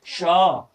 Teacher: श बोल कर देखिए होठ गोला हो जाएगा आपका · यहां पर तालब स का उच्चारण स्थान तालू है यानी इसको बोलते समय हमारा जीभ जो है वो तालू में